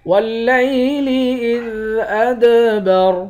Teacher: دال پر قلقلہ کریں گے، را کو موٹا پڑھیں گے، آخر میں را ساکن ہے۔